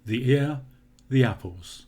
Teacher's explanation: it's almost as if I'm saying the air the arrows without the e sound in there at all